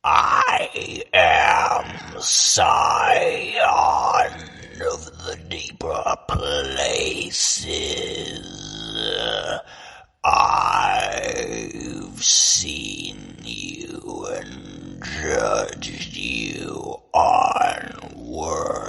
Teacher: And then do that same thing. So low, breathy, constrict, and then add character to it.